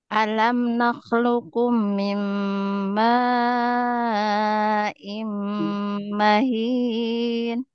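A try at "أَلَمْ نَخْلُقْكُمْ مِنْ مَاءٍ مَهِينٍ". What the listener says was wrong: Cuma sedikit di sini, Bu, ya. Dengungannya kurang sempurna. Mim alam nakhluqukum min ma'in mahin.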